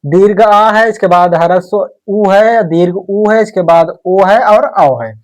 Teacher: इतने स्वर है हमारे जो जीभ के पीछे वाले भाग से बोले जाते हैं। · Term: पश्च स्वर